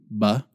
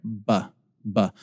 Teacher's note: your lips come together and you have this mild explosive expulsion of air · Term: plosive sound